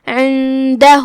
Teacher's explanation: دال حروف الاخفاء میں سے ہے لہذا ہم نون کو بغیر ظاہر کیے ہوئے لیکن غنہ کے ساتھ یہ حکم کو ادا کریں گے